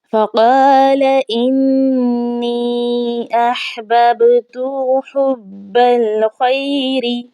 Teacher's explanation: انی یہاں پر مد جو آیا ہے یہ مد لازم ہے، 4 الف کی مقدار اس کو کھینچا جائے گا، تشدید آنے کی وجہ سے سختی بھی ہوگی نون کے اوپر۔ با ہے، با کے اوپر ہم نے قلقلہ کرنا ہے، یہ حروف قلقلہ میں سے ہے، آواز لوٹتی ہوئی محسوس ہونی چاہیے۔